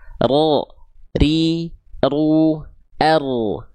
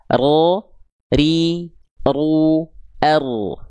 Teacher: jadi getaran huruf ro itu sedikit saja